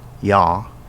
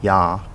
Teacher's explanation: the glottal sounding word yah means you but the non-glottal sounding word yah means house